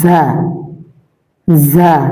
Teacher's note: জিহ্বার আগা সামনে নিচের দুই দাঁতের পেট ও আগার সঙ্গে লাগিয়ে ঝা। জিহ্বার আগা সামনে নিচের দুই দাঁতের পেট, জিহ্বার আগা সামনে নিচে দুই দাঁতের পেট ও আগার সঙ্গে, একদম আগা না, পেট আগার সাথে মিশিয়ে ঝা ঝা।